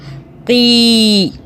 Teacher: جب یا آ گئی تو ہم نے قاف کو کھینچ کے پڑھ لیا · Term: مدہ